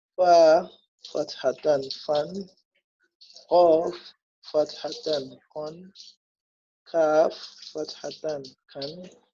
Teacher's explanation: The first vowel we pronounce it as we learned, and the second vowel we pronounce it noon, constant noon. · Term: tanween